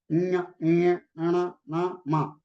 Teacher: These are Anunasikas, which we pronounce through nose. Anunasika. Nasika means nose.